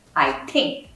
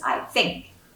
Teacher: the pronunciation of th [t] versus [f] I ‘tink’ versus I ‘fink’